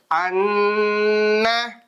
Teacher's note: அந்த நூனை கொஞ்சம் நிறுத்தி குன்னா பண்ணி ஓதணும் நிறுத்தி கொஞ்ச நேரம் வச்சு மூக்குல வச்சு ஓதுறதுக்கு பேர்தான் குன்னா மீமையும் அப்படித்தான்